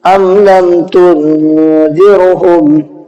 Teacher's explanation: ام کے بعد میں لام آیا، میم کے بعد میں لام، جس کی وجہ سے ہم نے میم کی آواز کو ظاہر کر کے پڑھا